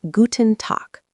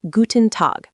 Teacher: German U is a bit more like oo, but shorter and cleaner. And Tag ends with a crisp K sound because final consonants often get devoiced.